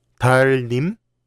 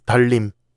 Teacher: when 니은 and 리을 are next to each other, 니은 changes to 리을. In this word, the consonant 니은 comes before 리을.